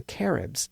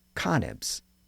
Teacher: in some of those dialects, the R sound was sometimes pronounced as an N sound. So some of the people in the north referred to the Caribs as Canibs, and the Spanish also sometimes referred to them as Caniba.